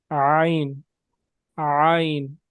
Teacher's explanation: گلے کے درمیانی حصے پہ آپ نے زور ڈالنا ہے، اور کوشش کریں اپنے ہونٹوں کو لمبا رکھیں، جس طرح ہنستے وقت ہمارے ہونٹ لمبے ہوتے ہیں۔